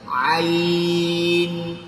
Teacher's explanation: عین حلق سے نکالنے کی کوشش، حلق کے درمیان کے حصے سے عین، عین اندر سے نکالے عین.